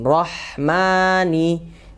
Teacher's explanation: huruf nun di mana ujung lidah ya menempel ke gusi atas